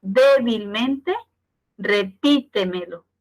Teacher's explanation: el acento se encuentra en la sílaba anterior a la antepenúltima, es decir, que sería la cuarta, empezando desde el final. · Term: sobresdrújulas